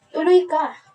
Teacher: Ito ay isang pangungusap na may malaking pagtaas ng boses sa huling pantig.